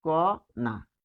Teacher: বানানটা হচ্ছে মূর্ধন্য দিয়ে, তাহলে উচ্চারণ হচ্ছে দন্তন্য দিয়ে